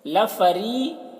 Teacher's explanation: را کو باریک پڑھیں گے، را کے نیچے زیر ہے اور یا مدہ ہے، یہاں پر یا ساکن سے پہلے زیر ہے تو اسے ایک الف کے برابر کھینچ کر پڑھیں گے۔